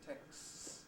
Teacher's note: We get a rather long S at the end, texts, but you don't actually necessarily have a plosive between them, texts. I think the distinction between singular and plural is maintained.